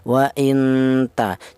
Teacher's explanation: Akan tetapi untuk ikhfa yang a'la itu tingkat kesamarannya lebih tinggi, ya, tingkat samarnya lebih tinggi dibanding dengungnya. Itu ikhfa a'la, yaitu samarnya lebih dominan daripada dengungnya